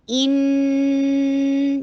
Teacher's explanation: ई कसरा के लिए ई की साउंड कीजिए और इन नून के ऊपर 2 हरका गुन्ना कीजिए, 2 हरका रुकना है। इन ये रुकने को कहते हैं और ये स्ट्रेच है।